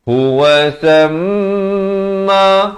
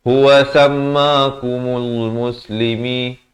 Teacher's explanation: Ini mim sabdu kena dengung dua harakat, wajibul ghunnah.